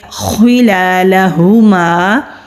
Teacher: خالی الف سے پہلے زبر ہے، 1 الف کے برابر کھینچ کر پڑھیں گے۔ خلالہما، خو مستعلیہ حروف میں سے ہے، موٹا پڑھیں گے۔ لام کے اوپر کھڑی زبر ہے، الف مدہ ہے، خالی الف سے پہلے زبر ہے، الف مدہ ہے۔